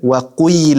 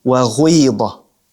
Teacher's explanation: Ishmam of the waw sound into the ya.